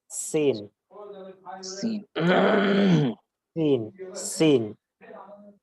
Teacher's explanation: সিন এটা চিকন উচ্চারণ হবে এটাতেও বাতাস বের হবে কিন্তু নরম এবং পাতলা হবে না একটু কর্কশন হবে